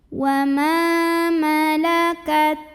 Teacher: jangan lupa untuk mengeluarkan sifat hams, keluarkan angin dari huruf ta ya terakhirnya. Malakat ai ada harfulin atau huruf lin, sebab ada ya sukun yang didahului baris fathah, maka dibacanya cukup kita lembutkan saja.